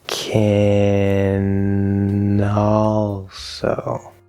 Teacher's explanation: that n will connect over to the ah of the l colored fifth vowel